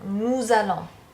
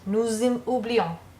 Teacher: in front of a vowel, we want to hear a Z sound